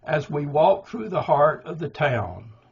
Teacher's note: now that's anapestic trimeter, three anapestic beats.